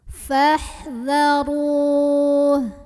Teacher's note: wruh orangnya dibunyikan secara tafkhim karena di atasnya ada baris gemah bacanya tebal pangkal lidah kita angkat